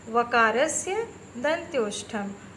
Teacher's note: व का उच्चारण स्थान दंत और ओष्ठ है